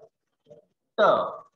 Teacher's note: when I pronounce t, my tongue touches the hard palate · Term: t sound